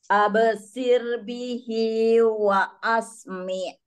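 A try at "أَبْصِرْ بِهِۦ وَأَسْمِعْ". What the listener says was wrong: Sepertinya tebalkan albosir sir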